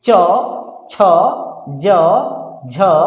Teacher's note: जब हम च बोलते हैं तो हमारा जुबान तालू में टच करता है, तब च का निर्माण होता है